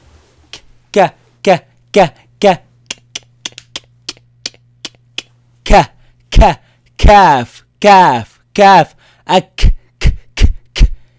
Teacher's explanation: If you realize where the soft palate ends and the hard palate begins, that's where the calf, the tongue touches that part.